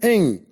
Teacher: And ing is a voiced velar nasal. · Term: voiced bilabial nasal